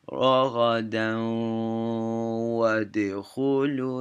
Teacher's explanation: The next letter gets doubled, and that letter gets dropped. The N sound gets dropped. So it would be, so this right here is syllable by syllable is ra, ra, down, and you hold the W for a 2 count. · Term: idgham